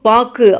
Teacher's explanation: சொல்லின் இறுதியில் வரும்போது ஒரு மாத்திரைக்கு பதிலாக அரை மாத்திரையாக ஒலிக்கின்றது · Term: குற்றிய லுகரம்